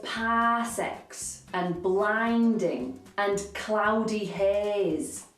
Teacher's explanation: these stretchy vowels are such a defining feature of a yorkshire accent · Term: elongated vowels